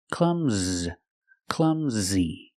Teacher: makes the uh sound like cup and up CL Clum Z the S makes a z sound like zebra